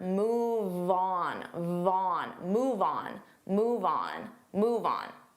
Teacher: Move on, you have the on move. Now on is a vowel, so we can transfer that sound and we can say these two like one word